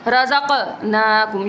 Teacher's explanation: قاف جو ہے وہ کلکلا میں سے ہے اور یہاں پر ہم کلکلا جب کریں گے آواز ایسے لگے گا جیسے ہماری لوٹی ہوئی آواز نکل رہی ہو